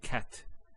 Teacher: So the t doesn't have any vowel associated with it. It's actually just a stop on the t. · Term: sukun